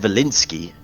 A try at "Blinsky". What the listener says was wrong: Blinsky with a B.